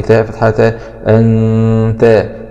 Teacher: نون سكون مع الإخفاء الحقيقي